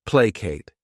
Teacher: This word has 2 syllables, and the stress is on that first syllable.